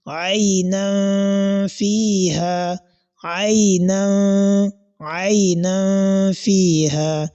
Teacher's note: The nasal sound, that is the type of rule that we can identify in this place, is what is known as ikhfa'un haqiqi. Ikhfa'un haqiqi, that is a concealment, which is among the rules governing nun sakina.